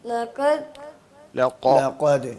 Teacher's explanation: इतना जोर से नहीं निकालते और उसको गले से नहीं निकालते कौफ जो है जबान के आखरी हिस्से से जो गले के पास होता है वहां से निकलता है